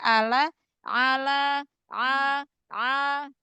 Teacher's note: Ain buka lagi e tenggorokannya jangan kayak Hamzah